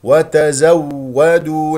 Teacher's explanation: نسمع صوت الواو الساكنه ثم الواو المفتوحه وفيها نبر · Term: الواو مشدده